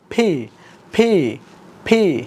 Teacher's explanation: যখন আমরা ফি বলবো তখন কিন্তু আমাদের দুই ঠোঁট একসাথে হবে